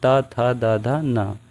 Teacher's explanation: त वर्ग को हम दंत से बोलते हैं